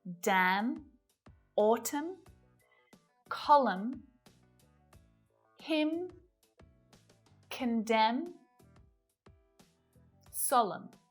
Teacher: N is silent at the end of a word when it follows M